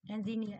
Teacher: Trọng âm rơi vào âm ear đối với engineer này.